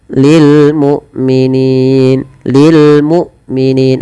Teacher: hamzah tidak boleh diseret dan dia harus dijelaskan suara bunyinya penahanan daripada suaranya dan penahan dari nafasnya